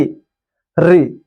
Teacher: जीभ हमारा जो है थर्राते हुए ऊपर की तरफ जा रहा है। री, बड़ी री चाहे छोटी री, बस खाली बोलो री री। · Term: मूर्धा